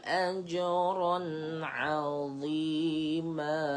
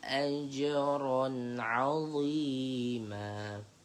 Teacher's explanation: Jadi keluarkanlah hujung lidah anda supaya a hujung lidah anda tu akan diapit oleh gigi gunting. Jadi sebutan dia terhasillah bunyi tebal. A ah pada masa yang sama pangkal lidah kita pun naik.